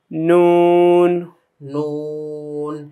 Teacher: জিহ্বার আগাটা উপরের তালুর সঙ্গে গিয়ে লাগবে এবং ঠোঁটটা গোল হবে, কারণ এখানে পেশের একটা ভাব আছে, তাই না?